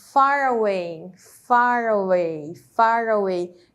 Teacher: juntei aí o som do R com o som do a no começo e se formou um um som apenas né Far Away significa